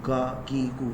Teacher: قاف کے مخرج سے تھوڑا سا منہ کی طرف اٹ کر وہاں سے کاف ادا ہوتا ہے